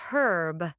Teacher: where did the H go it's herb the H is silent